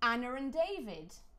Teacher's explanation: You hear the R between Anna and David. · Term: intrusive R